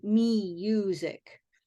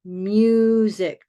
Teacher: when we say music we're not saying me music we're saying with a Y consonant